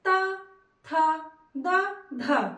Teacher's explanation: जब भी बोलेंगे त, थ, द, ध तो हमारे जीभ का अगला भाग दांत को टच करता है, तो आप कहेंगे कि इसका उच्चारण स्थान दंत है।